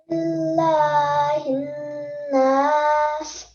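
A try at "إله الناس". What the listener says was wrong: Okay, so the key for noon sound for a bit longer, so more, just 2 seconds. So it's not ilahinnas, it's ilahinnas. No emphasis on the lam, okay?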